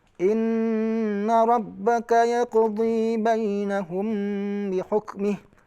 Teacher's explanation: masyhurnya yang kita dapatkan dari guru kita membaca ikhfa syafawi itu dengan menutup bibir